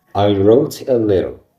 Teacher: T sound like D when between two vowels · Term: flat T